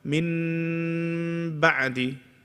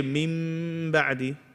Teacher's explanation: In the iqlab, you're changing the noon into a mim.